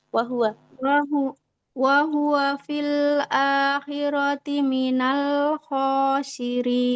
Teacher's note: Di minal lam sukunnya jangan ee jangan lepas duluan ada sedikit ada sedikit el